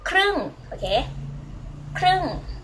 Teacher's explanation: Half is k, r, u, ng, falling tone.